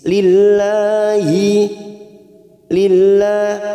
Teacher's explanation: lam jalalah yang didahului kasroh kita baca tarkik tipis. Lillahi lillah kita panjangkan 2 harokat lanya.